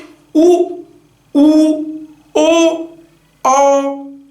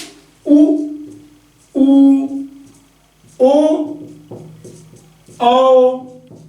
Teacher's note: यही तो स्वर है जिनको बोलते समय मुख गोला बन रहा है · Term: वृत मुखी